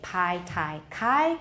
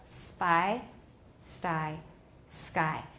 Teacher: so if we put an S in front of PT k PT k are no longer aspirated but they are not voiced · P, T, and K, if they're the first sound of the syllable, they are definitely aspirated. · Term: aspiration